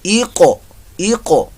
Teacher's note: اور قاف پر موٹا بھی پڑا جائے گا، حروف مستعلیہ میں سے ہے